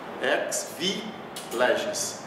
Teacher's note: o X tem som de KS